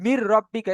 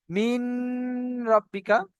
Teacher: এইবারে দেখেন এইখানে যে নুন সাকিনকে এতক্ষণ আমরা কেটে রেখেছিলাম, নুন সাকিনের পরে র এসছে, আমি বলেছিলাম তানবিন বা নুন সাকিনের পরে যদি র আসে তাহলে সেই নুন সাকিনকে বিনা গুণনা জাহির করে পড়বো। তাহলে নুন সাকিনের পরে র এসছে, র আর লাম বলে আসলে বিনা গুণনা জাহির করে পড়তে হবে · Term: ইদগামে তাম